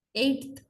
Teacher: t can also become dentalized in front of a dental consonant like in eighth